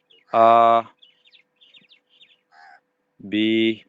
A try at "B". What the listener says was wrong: बे बे बी नहीं बे।